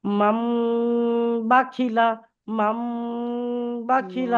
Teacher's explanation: এই নুন সাকিনের পরে বা আসছে, তো বা আসলে মিম দ্বারা পরিবর্তন করে একই পরিমাণ গুণা করে পড়তে হবে।